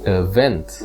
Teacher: in this word, the emphasis is placed on the second syllable, event